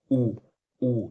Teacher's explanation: ये इसको हम लोग गोली स्वर बोलते हैं। जब आप बोलेंगे ना, तो होंठ का आकार गोला हो जाता है, लगभग गोल जैसा बन जाता है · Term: वृत्तमुखी